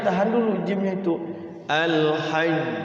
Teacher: Nah kemudian ada yang bertasydid ternyata al-hajju ashhurum ma'lumat. Kalau diwakaf di al-hajj berarti dia harus tahan dulu jimnya itu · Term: qalqalah